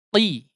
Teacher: huruf qaf ya ketika dikasrohkan ya tidak setebal ketika difathahkan atau didommahkan. Dia akan sedikit menipis ya, sedikit menipis ya.